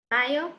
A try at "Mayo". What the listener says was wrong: Mayo. Muy bien.